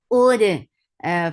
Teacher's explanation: Ud, for dhamma circle lips, and hamza is sharp, attach it dal, dal will get sifa of qalqala